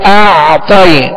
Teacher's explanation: کھینچنے کے بعد اعطائی, تو عین جو ہے اس پر جزم ہے, عین ساکن ہے, لہذا اس کا سکون کامل ادا کریں گے. اعطائی تا کو پر پڑھیں گے, اس لیے کہ حروف مستعلیہ میں سے ہے